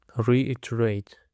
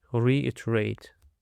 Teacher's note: The stress on the second syllable